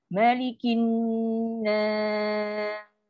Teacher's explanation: Sin ada sifat angin lepas. Lepaskan angin.